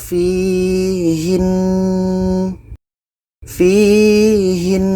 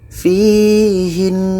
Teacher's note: kita melakukan ghunnah pada nun tasydid sebelum berhenti